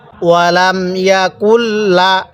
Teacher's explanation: নুনটা সাকিনওয়ালা হরফ লামটা তাজদিওয়ালা হরফ তাহলে সাকিনওয়ালা হরফের পরে লামটা তাজদিওয়ালা হরফ এজন্য আমরা নুন সাকিনটাকে বাদ দিব